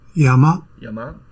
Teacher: notated this word that we can hear Yama Yama as having a low pitch on the first Mora and a high pitch on the second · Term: pitch accent